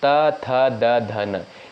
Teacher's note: त वर्ग के अंतर्गत जो भी वर्ड आते हैं उनका उच्चारण स्थान होता है दंत